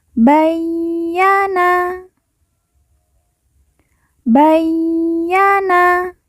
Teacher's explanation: ya yang bertasjid kita baca ditekan dan ditahan dua harakat